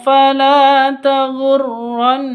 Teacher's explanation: Nun tasdid berdiri sendiri Nun tasdidnya gunah musyaddadah dengung dua ketuk